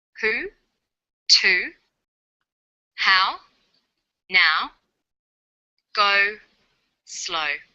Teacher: Sounds that are produced with the highest part of the tongue but close to the back of the mouth. · High back vowels link with the w sound. High back vowels are oo, ow, and o.